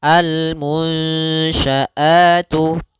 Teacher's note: ada nun sukun bertemu dengan huruf syin yaitu suara nunnya harus dibaca samar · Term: ikhfa